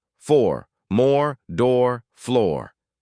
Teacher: O, as in 4, round the lips and push them forward into a small, tight O shape. The back of the tongue rises. Hold it long.